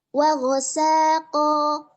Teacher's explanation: dibaca dengan wa ghasaqo dengan tahfiful sin. Jadi sinnya itu tidak bertasydid.